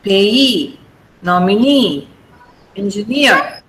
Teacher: words take the stress on the last syllable